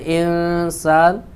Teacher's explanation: نون ساکن کے بعد سین ہے جو حروف اخفاء میں سے ہے، یہاں پر اخفاء ہوگا، یعنی ایک الف کے برابر یہاں بھی غنہ کریں گے.